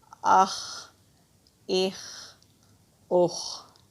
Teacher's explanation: مستعلیہ کا مطلب ہوتا ہے موٹے حروف، اور یہ حروف حلقی بھی ہے، حلق سے نکالتے ہوئے پڑھیں گے۔